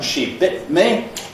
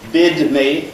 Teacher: I have that reinforcing glottal stop there on the T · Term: pre-glottalization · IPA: [ʃi ˈbɪʔt mi]